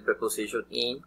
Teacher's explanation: the mouth is narrow, and the sound comes from the front part of the mouth